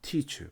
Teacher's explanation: 여러분 teacher 발음할 때 앞에 입 앞에 손을 한번 손바닥을 갖다 대고 teacher 바람이 나가요. 아니 종이를 대보면 종이가 팔락거리겠죠. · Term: 기식